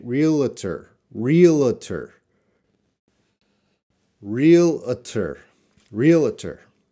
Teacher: so that's an extra schwa they're putting it in there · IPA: /ˈrɪələtər/